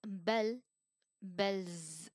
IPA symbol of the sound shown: z